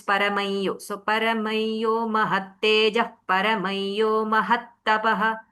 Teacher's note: Visarga becomes nasalized yakara followed whenever anuswara is followed by ya, it becomes paramayyo.